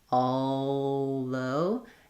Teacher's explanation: You need to hear that kind of L coloring of the vowel, and that's a classic example of where I'm going to use that dark L, that I'm making the L sound more with the back of my tongue and the vowel · I think that I lift and use more of the back of my tongue there, although. But you can also make the dark L where it doesn't fully lift, although, and then go right into the TH sound.